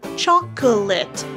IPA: ˈtʃɔ kə lɪt